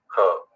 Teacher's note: ख बोला जरा ज्यादा ताकत लगा दी तो ख हो गया। उसको बोलते महाप्राण।